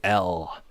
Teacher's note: That consonant, the dark L, is a velar consonant, so it's made in the throat.